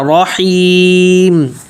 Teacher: حیم کھینچتے وقت ناک میں آواز نہیں جائے اور آخر میں میم کو واضح کرنا ہے